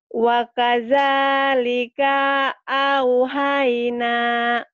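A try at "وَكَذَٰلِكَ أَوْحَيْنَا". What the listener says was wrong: Kanya pendek.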